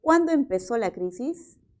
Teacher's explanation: Siempre se va a entender como una pregunta por la palabra cuándo. Por lo tanto, su tono final es descendente.